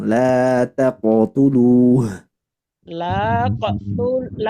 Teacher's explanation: Nah, huruf qaf harus dipantulkan